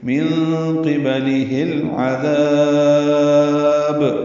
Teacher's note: ذال کو نرمی سے ادا کریں گے، ذا الف مدہ ہے، 2 حرکات لمبا کرنا ہوتا ہے، لیکن ہم نے اس پہ وقف کرنا ہے. با پہ تو قلقلہ کریں گے اور ذال کو زیادہ لمبا کریں گے